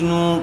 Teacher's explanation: پیش والے حرف کے بعد واو ساکن آیا ہوا ہے اس لیے واو مدہ ہوگا. نون کو تھوڑا کھینچ کر پڑھیں گے